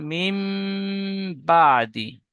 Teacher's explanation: নুন সাকিনের পরে বা এসেছে, তাই নুন সাকিনকে মিমের দ্বারায় পরিবর্তন করে এক আলিফ পরিমাণ গুণনা সহ পড়িতে হয়। একে ইকলাব বলে।